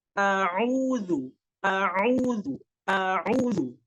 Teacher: Huruf yang keluar dari tenggorokan bagian wasat hati. Dan ketika kita mengeluarkan huruf ain itu harus dimurnikan keluar dari tenggorokan. Jangan sampai masuk ke hidung